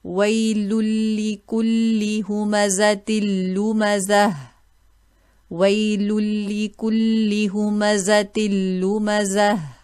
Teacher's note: The next example, dhamma tanween followed by lam, and also a kasra tanween followed by alam. Now we will merge without a gunna.